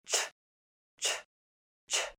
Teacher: The sound is unvoiced, so you shouldn't feel any vibrations in your vocal cords. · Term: ch sound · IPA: /t∫/